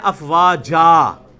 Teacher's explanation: جب یہ تن کو وقف کیا جائے گا نا تو ایک زبر اڑ کے تو الف بن جائے گا